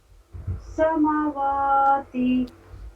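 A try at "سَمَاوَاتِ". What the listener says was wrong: समा पे थोड़ा सा और खींचिए। समा, तो दोनों में देखिए बैलेंस बनाएंगे ना, दोनों में तवाजुन बनाएंगे तब तो। हाँ यही चीज़ होना चाहिए, नहीं तो अगर मीम को कम खींचेंगी वाव को ज़्यादा खींचेंगी तो फिर दोनों में सुनने में अच्छा नहीं लगता है। इक्वल दोनों में बैलेंस बरकरार रखना है।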